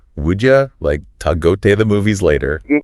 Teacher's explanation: would you becomes would ya, to is like ta.